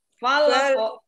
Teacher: Pantulan huruf qaf ini seperti membaca harokat fathah atau menyerupai harokat fathah. Kan kalau ko difathahkan ko ya. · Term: huruf qalqalah